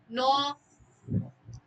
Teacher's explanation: নাসিক্য ধ্বনি হচ্ছে ম উচ্চারণ করেন নাক দিয়ে বের হবে